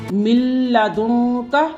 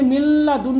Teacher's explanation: جب بھی نون ساکن یا تنوین کے بعد حرف لام آئے گا یا را آئے گی تو وہاں پر غنہ نہیں کیا جائے گا، نون ساکن کو بالکل پڑھا ہی نہیں جائے گا۔ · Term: ادغام بلا غنہ